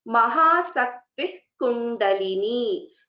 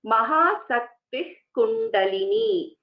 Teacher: Mahasakti Kundalini. So the Visarga is not fully pronounced.